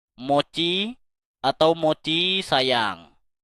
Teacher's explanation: Nada yang mengayun ke atas di akhir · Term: nada naik